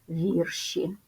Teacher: однакова кількість звуків Зверніть увагу на наступне однина вірш множина вірші наголос сталий і він залишається на першому складі